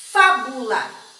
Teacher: O acento agudo está no fá, porque é um som aberto